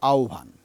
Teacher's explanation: হয়ের সঙ্গে ব যুক্ত হলে প্রথমে বটি ও অথবা উ এর মতো হবে, এরপর এর সঙ্গে একটা ভ যুক্ত হবে, তারপর এটা শব্দটাকে পুরোপুরি উচ্চারিত হবে, এটা হবে আহ্বান।